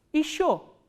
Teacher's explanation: this ye unstressed, ye will be pronounced as e, not ye.